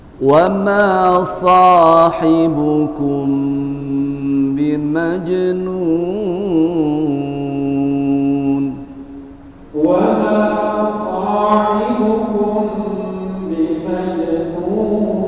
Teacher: Kemudian yang bacaan yang ketiga pada mad arid disukun 6 harokat atau setara dengan mad lazim mukhaffaf kilmi atau kalimi.